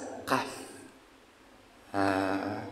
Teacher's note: Kaf ada di aqsal lisan, ada di pangkal lisan. Kaf agak ke atas dibandingkan dengan makhraj qaf. Jadi kalau qaf ke belakang, kalau kaf agak ke atas.